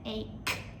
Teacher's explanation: We pronounce it ache with a hard K, not the ch sound.